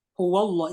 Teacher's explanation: lam jenis ini merupakan lam jalalah yang cara membacanya tebal. Syaratnya, satu huruf sebelum lafaz Allah harus berharokat fathah atau dhammah. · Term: tafkhim